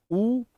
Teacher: ऊ बोल के देखो, होठ गोल हो जाएंगे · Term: व्रतमुखी